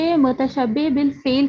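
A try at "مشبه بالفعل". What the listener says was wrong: حروف مشبہ بالفعل، متشبہ نہیں، مشبہ بالفعل اس کو کہیں گے، ٹھیک ہے۔ آگے فاعل کی کتنی اقسام ہیں؟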